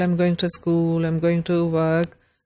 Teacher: pronounced of example I'm going to school I'm going to work the two is not clearly pronounced